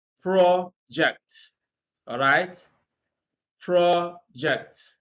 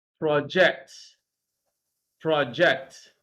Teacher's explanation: When you have a word that is used as a noun and also as a verb, it is stress that determines whether you are using the word as a noun or as a verb. When you are using this word as a noun, stress is on the first syllable, project. All right? Project. When you are using it as a verb, stress is on the second syllable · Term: shifting stress